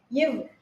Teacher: மேல்வாய் பல்லு வந்து நம்மளோட கீழ் உதட பொருந்தும்